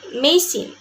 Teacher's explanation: the A in the word machine is pronounced as a very weak, indistinct sound represented by an upside down A, machine.